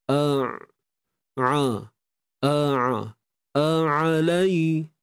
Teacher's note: Kan kita matikan ain, kita rasa bunyi menyempit tu